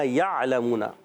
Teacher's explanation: عین حلق کے درمیان والے حصے سے. لام پر زبر ہے، حرکت ہے، نہیں کھینچیں گے.